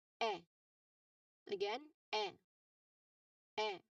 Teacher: you open your mouth medium. So the tongue here is mid-front. And it sounds like your jaw is loose here.